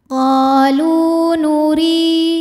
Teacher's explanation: cara bacanya ro dibaca tipis